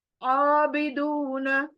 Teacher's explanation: دون پیش کے بعد واو مدہ کھینچوں گی